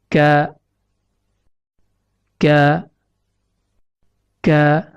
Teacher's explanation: Huruf kaf keluar dari pangkal lidah yang menempel pada pertemuan antara langit-langit lunak atau yang diistilahkan dengan palatum mole dengan langit-langit keras atau yang diistilahkan dengan palatum durum.